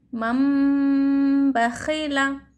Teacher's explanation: तनवीन या नून साकिन के बाद बा आए तो नून को मीम से बदलकर गुन्ना और इख़फ़ा के साथ पढ़ेंगे। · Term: इक़लाब